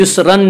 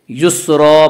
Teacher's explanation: یس، را 2 زبر رن، را 2 زبر رن، را کے اوپر 2 زبر ہے، را کے 2 زبر کو حالت وقف میں ایک زبر کے الف کے ساتھ پڑھا جائے گا